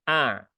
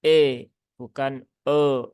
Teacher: sempurnakan sifat dari Hamzah dia punya sifat syiddah maka jelas ya kuat ya A nah begitu Bukan e bukan e ya tapi a